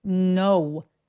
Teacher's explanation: 우리말에 어우처럼 발음이 되는데 두 번째 포인트 우 소리 입술을 모아주시는 게 포인트예요